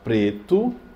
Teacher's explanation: paroxítona, quando ela é a penúltima mais forte, no caso preto.